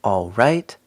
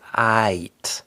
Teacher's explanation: So we don't pronounce the L. Instead of saying all right, you get aight. It sounds really just like you're saying aight.